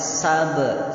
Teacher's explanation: Ba di situ adalah qalqalah kecil, sughra.